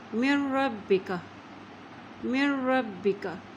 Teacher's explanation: اب میم کی زیر کو را کے ساتھ ملائیں گے کیونکہ را کے اوپر شد ہے۔ اسی طرح را کی زبر کو با کے ساتھ ملاتے ہوئے پڑھیں گے کیونکہ با کے اوپر بھی شد ہے